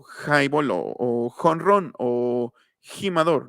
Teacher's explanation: casi llegando a la campanilla que se llaman lado bula entonces la jota se pronuncia aquí aquí en el velo del paladar donde tienes carnita así ah no perdón más bien aquí en